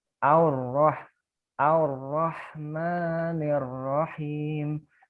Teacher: Nah, kalau ini hamzah ketemu ro, dia tebal, tafkhim ya, tafkhim. Tebalnya gimana? Seperti ada u-nya.